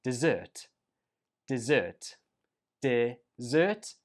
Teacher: Whereas this one is pronounced dessert, dessert, dessert, and the stress goes on the second syllable